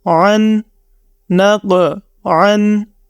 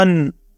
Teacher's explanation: عین کے لیے ہم نے آواز اپنے گلے کے درمیانی حصہ سے نکال کے اس کو پڑھا